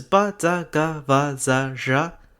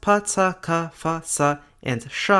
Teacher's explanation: In both Polish and Russian, voiced obstruents such as ba, da, ga, va, za, zha are voiceless at the ends of words, pronounced pa, ta, ka, fa, sa, and sha respectively.